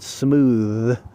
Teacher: smooth you look at the word smooth you've got a the you're voicing the th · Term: voiced version